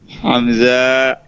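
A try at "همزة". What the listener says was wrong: হামজা, টানতে যাবে না।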